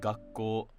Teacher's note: So a word like gakko would be pronounced flat in isolation, but if it's part of a compound such as koto gakko, then it will be pronounced with the drop after the first mora.